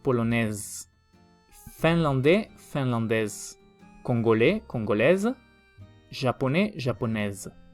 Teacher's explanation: se pronuncia la S como una Z · No se pronuncia la S en masculino, se pronuncia la S como Z en el femenino.